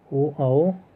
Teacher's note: ओ आओ कंठोष्ठ वर्ण है, जो कंठ और ओष्ठ की सहायता से बोले जाते हैं।